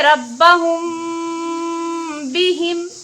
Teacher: यहाँ पे मीम साकिन के बाद बा आ रही है तो यहाँ गुन्ना के साथ इख्फा भी होगा।